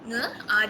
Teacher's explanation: Bunyi nge merupakan bunyi konsonan sengawan lelangit lembut.